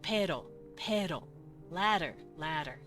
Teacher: Yes, that sounds like a d, but it's technically a r. It's a tap.